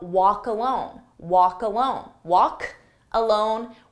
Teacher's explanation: But again, there's that k sound. So I take that K sound and I put it on the next word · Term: linking